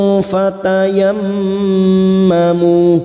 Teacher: mim yang bertasdid gunna mustadadah kita dengungkan 3 harakat. Fatayammamu, mu karena kita wakaf di sini 2 harakat kita panjangkan dan kita mengulang pada kalimat fatayammamu.